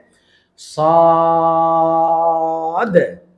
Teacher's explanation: আর এই হরফের শেষের উচ্চারণে একটা ধাক্কা হবে, এটা এখন বোঝা যাবে না, কারণ এই হরফ লিখতে গেলে একটা দাল সাকিন পাওয়া যায়, যেটা হলো কলকলার নিয়ম, ধাক্কা দেওয়ার নিয়ম। এই জন্য যখন আমরা সদ এবং দদ এই 2টা হরফের উচ্চারণ বলবো, তখন আমরা টান দিব, মোটা করব এবং শেষে একটা ধাক্কা দিব।